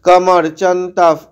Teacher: বিসর্গটা ফ, অর্ধেক ফ এর মতো শোনাবে